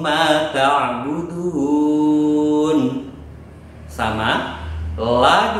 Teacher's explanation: dibaca panjang sebanyak lima ketukan karena ada Mad bertemu dengan Hamzah